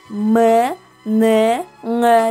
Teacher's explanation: Мурунчул үнсүздөр аларга М, Н, Ң табыштары кирет. Булар өпкөдөн келаткан абанын айрым бөлүгү мурун көңдөйүнө өтүү аркылуу жасалат.